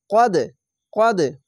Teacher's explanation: কলকলা ধাক্কা মেরে হবে